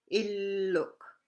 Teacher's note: The L sounds the same as English, like illuk. Remember, you got to stress your two L's there.